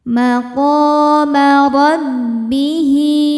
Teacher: ro dibaca tafkhim karena berharokat fathah. Cara bacanya ditebalkan. Rabbihi, hi hukumnya mad silah qasirah ya karena ada hal dhamir yang diapit 2 huruf hidup dan setelahnya selain hamzah, maka hal dhamirnya dipanjangkan 2 harokat.